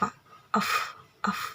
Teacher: antara bibir dan giginya bertemu, atau bisa disebut juga labiodental